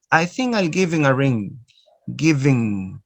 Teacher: Notice no ha. So you omit the sound ha. All right? The ha is not pronounced.